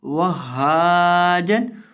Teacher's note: واو کو ہا کے ساتھ ملا کر پڑھیں گے اور ہا کو ایک الف کے برابر لمبا کر کے پڑھیں گے